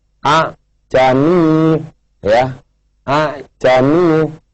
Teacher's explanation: Kemudian yang kedua dimatikan, maka hamzah yang kedua atau alif disuarakan antara hamzah dan alif atau samar-samar. Ini yang dimaksud dengan tashil.